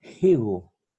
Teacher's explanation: Entonces aquí se lee higo, una H aspirada, un fonema fricativo aspirado